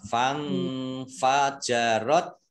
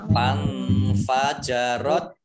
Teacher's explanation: tak sukun itu agak T-nya agak keluar S-nya sedikit. Fang fajarot, ya mendesis sedikit.